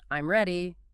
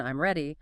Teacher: If you say it with a falling tone, I'm ready, it's a statement.